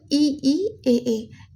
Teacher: जीभ के अगले भाग से बोले जाने वाले स्वर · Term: अग्र